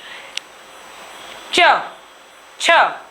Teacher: जीभ के ऊपर का जो हिस्सा होता है उसको बोलते हैं तालु। च छ आप वर्णों को उच्चारित करके देखिए, आपकी जीभ तालु से जरूर छुएगी। इसलिए च वर्ग के जो हमारे व्यंजन है, जो वर्ण है, वो हमारे तालव्य के अंतर्गत आते हैं।